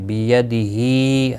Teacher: ہا کے نیچے کھڑی زیر ہے ایک الف کے برابر کھینچ کر پڑھیں گے